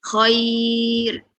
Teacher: bibirnya mundur ya Khoir getarnya jangan banyak-banyak